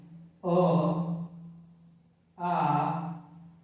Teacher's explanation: तो अ और आ सबसे पहले वाली लाइन में आ जाएंगे, अर्थात अ और आ का उच्चारण कंठ से होगा। जब अ और आ बोलेंगे तो यह आपको आभास होगा कि इनका उच्चारण कंठ से होगा।